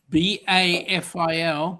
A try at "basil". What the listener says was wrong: No, S.